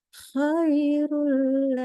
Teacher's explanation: karena lam tidak ada sifat gunah tidak boleh ditahan · maka kita membacanya langsung ke huruf lam tidak boleh ada bunyi nunnya